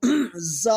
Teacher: اور زا جو ہے یہ سین کے ساتھ ادا کی جاتی ہے اور زبان جو ہے سین کی جگہ یعنی دانتوں کے اندر لگے گی تو زا پڑا جائے گا سیٹی کے ساتھ تیز آواز میں